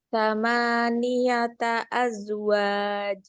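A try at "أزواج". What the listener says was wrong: Mana qalqalahnya? Kecil banget. Azwaj. Waj.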